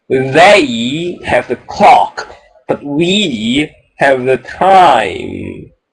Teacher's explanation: you've got to make that contrast between they and we so it's a double contrast emphasis